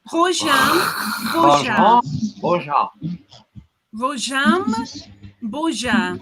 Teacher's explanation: you have to have that guttural R and that nasal either M or N